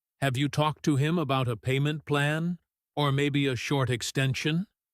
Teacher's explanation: This kind of practical problem-solving question usually has a fairly gentle rising tone at the end. Since it's a real open question inviting information.